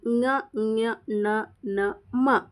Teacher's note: ಅನುನಾಸಿಕ ಇವು ಮೂಗಿನ ಸಹಾಯದಿಂದ ಹೇಳುವಂತ ಅಕ್ಷರಗಳು